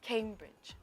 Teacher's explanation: So the stress is on the first syllable.